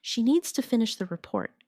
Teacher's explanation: Stress needs and report and let the small words fall quietly. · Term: rhythm